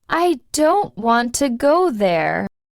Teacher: the smaller words like I, to, there are said more softly or quickly.